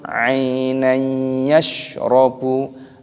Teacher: Perhatikan, ada ya sukun ainan yashrabu, ada fathah tanwinnya bertemu dengan huruf ya. Ini hukumnya dibaca idgham bi gunnah, jadi dimasukkan dan didengungkan.